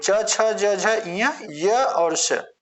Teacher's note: ये ताल से बोला जाता है इसलिए इसको हम तालव्य बोलते